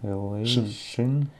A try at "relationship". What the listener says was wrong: А вот в конце. Пока договори до конца.